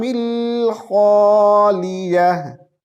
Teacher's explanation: خالیہ لے نہیں ہوتا, خا کو موٹی آواز سے پڑھتے ہیں